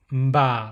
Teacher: instead of a p sound it's more like a b sound and it has a nasal sound